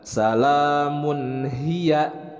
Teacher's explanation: Mun di sini ada tanwin dhammah bertemu dengan huruf ha, dibaca izhar, itu pembacaannya jelas tanpa ada gunnah